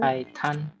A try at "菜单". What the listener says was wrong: Jangan tan ya. 菜单. Bukan T ya. Ini D.